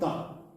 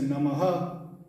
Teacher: So when we say nama, so it's nama, or some people say namaha. So that the sound of ha coming out, or the sound of air coming out is called visarga